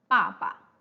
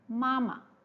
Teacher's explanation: The second type of neutral tone is that the unstressed syllable, like the second ba in 爸爸, the second ba in 爸爸, and also the second ma in 妈妈. So the second ba and the second ma, they are unstressed syllables. Neutral tone syllables, they don't have a tone mark, right?